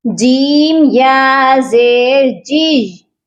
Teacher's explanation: جیم یا زیر جی، یا کو یا مدہ بنا دیتے ہیں، یہ یا مشدد ہے یا مدہ نہیں ہے، اس کو ہم نے کھینچ کر نہیں پڑھنا